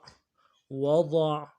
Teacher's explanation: عین میں آواز جا رہے گی، ضاد کو موٹا کریں گے